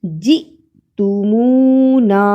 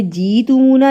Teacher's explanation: حمزہ پر جزم ہے، یہاں جھٹکا لگانا ہے۔